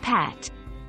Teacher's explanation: your throat and say the sound of p as in Pat notice that there is no vibration that's because p is a voiceless sound